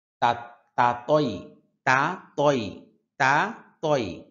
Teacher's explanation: দুইটা হরফ একই জায়গা থেকে উচ্চারণ হয় তবে তা পাতলা ভাবে হবে ত মোটা ভাবে হবে